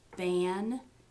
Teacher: That means your velum is open or lowered, and air is coming out of your nose. So the difference between ban and bad is that the n is a nasal sound. Actually, if you have a hard time feeling it, you can put a small mirror under your nose, and the mirror will fog up when you have a nasal sound.